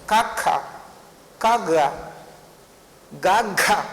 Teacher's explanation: గా పలికినప్పుడు నువ్వు నాదంగా పలుకుతున్నావు, కా పలికినప్పుడు శ్వాసంగా పలుకుతున్నావు.